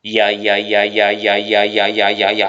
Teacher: 그럼 여러분들이 야를 발음할 때요, 야! 할 때 원래 이 야는요, 마치 하나인 것처럼 발음하지만 원래는 이와 아가 합쳐진 말입니다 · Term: 이중모음